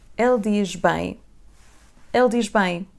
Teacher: letra Z vai ter o som J quando está antes das consoantes sonoras. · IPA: /ʒ/